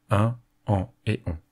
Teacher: Une voyelle nasale se différencie d'une voyelle normale, dite orale, par le fait qu'au leu d'être prononcée en expulsant l'intégralité du flux d'air par la bouche, une partie de ce flux d'air est dirigé vers les fosses nasales. Pour cela, on abaisse le voile du palais afin d'ouvrir le passage vers la cavité nasale.